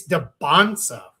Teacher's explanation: It's Deb Bansa with no T sound.